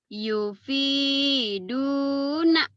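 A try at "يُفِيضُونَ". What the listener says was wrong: Yufiduna. Dot. Yufiduna. Orang Sunda mau do bulat ya. Lembut. Yufidhu. Bukan yufidu ya. Bukan kedal. Tapi ke dot. Yufiduna.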